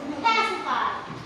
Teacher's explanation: It is in the first syllable. So the pacify should be aspirated. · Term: aspiration